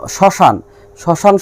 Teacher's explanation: এবং শ্মশান, শ্মশান শব্দে প্রথম বর্ণে তালবস্বর সঙ্গে ম রয়েছে এবং তালবস্বর উচ্চারণ স্বাভাবিক না হয়ে একটু দীর্ঘ হয়েছে এবং উচ্চারণে কিছুটা শাসাঘাত পড়ে